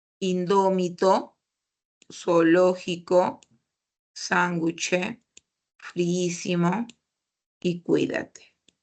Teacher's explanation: Todas son esdrújulas porque tienen la mayor fuerza de voz en la antepenúltima